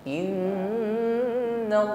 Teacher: fiili Nun tasdid ataupun mim yang bertasdid gah musyadadah dengungkan ya tingkatan gunahnya di sini Akmal ya dengungnya paling sempurna